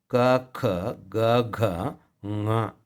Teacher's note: ನಾವು ಈ ಕಂಠದಿಂದ ಉತ್ಪತ್ತಿಯಾಗುವಂಥವು ಯಾವ್ಯಾವಿದ್ದಾವೆ, ಅದು ಕ ಖ ಗ ಘ ङ. ನಾಲಿಗೆ ಅಲ್ಲೇ ಟಚ್ ಆಗಿರಬೇಕು ಆ 5 ಅಕ್ಷರಗಳನ್ನು ಹೇಳುವಾಗ.